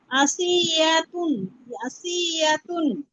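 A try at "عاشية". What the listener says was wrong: শিন আপু শিন আশিয়াতুন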